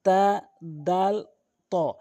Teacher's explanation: এই তিনটি হরফ জিহ্বার আগা এবং সামনে যে দুটি দাঁত রয়েছে ওই দুটি দাঁতের গোড়াতে লাগিয়ে এভাবে উচ্চারণ করবেন।